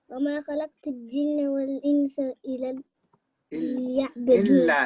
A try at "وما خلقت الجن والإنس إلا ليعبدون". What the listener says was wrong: Illa. There's a shadda there. Can you see the shadda? Illa. That means you need to make it strong.